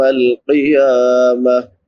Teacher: واو ساکن ما قبل فتحہ یعنی زبر ہے تو اس کو نرمی سے پڑھیں گے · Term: واو لین